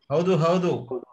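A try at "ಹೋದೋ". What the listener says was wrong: No, you're saying like rowdy.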